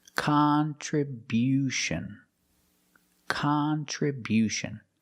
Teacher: We change the stress to the first and third syllable.